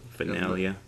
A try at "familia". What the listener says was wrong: No, it's not an N. It's an M.